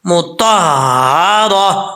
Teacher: जैसे ये लफ्ज़ जो है सूरत अल-बय्यिना में आता है, सुहुफ़म मुत्तहरा। अब यहाँ पे जब हमने वक्फ किया तो ये ता हा से तब्दील कर देंगे, मुत्तहरातिन नहीं पढ़ेंगे, मुत्तहरा, ये गोल ता का कायदा है।